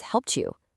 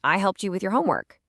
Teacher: the T sound and the Y sound, they often fuse together to create a ch sound.